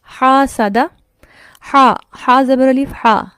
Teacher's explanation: ہا کے ساتھ جو آ کی آواز آ رہی ہے وہ تو منہ کے خالی حصے سے ہے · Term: الف مدہ